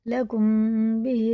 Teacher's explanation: میم ساکن کے بعد با آئے تو غنہ کے ساتھ اخفا کریں گے، غنہ بھی کریں گے، اخفا بھی کریں گے، ان کی طرح۔ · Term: اخفا شفیع